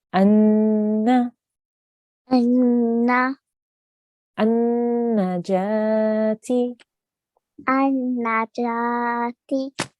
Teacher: we have to hold the nasal sound and then we say the fatha. So you say anna, Anna. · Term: noon gunna